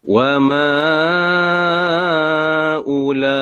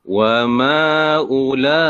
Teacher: Jadi mad jaiz ni, ma ni kita boleh pilih nak baca 2, 4 ataupun 6. Dan ulaika ni memang wajib.